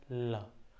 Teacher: जीभ ऊपर टच कर रहा है और एक दोनों तरफ ना खिड़की टाइप का बन जा रहा है। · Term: पार्श्विक